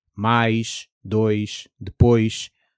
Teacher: Take a word like português, and instead of trying to force an English S onto the end, just let your tongue relax back slightly and let some air hiss out the sides, closer to sh than to a hard S. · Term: final position S